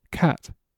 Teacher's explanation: But notice the straightness of the sound. There's no bending as in the word cake.